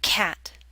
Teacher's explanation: Your mouth should be more open for the A in cat.